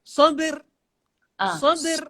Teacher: Artinya ada qalqalah dan terus bersambung dengan ra.